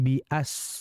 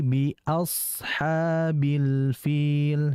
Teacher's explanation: Huruf sad ini merupakan huruf yang tebal, yang dia hurufnya juga mengalir. Jadi diperhatikan dalam alirannya, ditahan. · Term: sad yang sukun